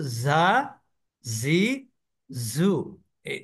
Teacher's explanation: জিহ্বার আগাটা নিচের দাঁতের গোড়ায় যুক্ত হয় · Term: ঝা